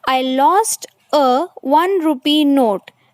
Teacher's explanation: Here 1 is starting with O, but it is sounding as wa. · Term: pronounced as wa